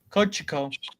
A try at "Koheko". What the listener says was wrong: No, they don't say the CH. They say it differently.